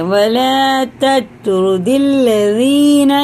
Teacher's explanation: تا کو باریک اور توئے کو پر کرتے ہوئے پڑھیں گے